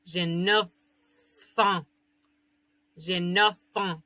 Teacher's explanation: Porque es una F, pero al unirla con la A, suena como que si fuera una sola palabra.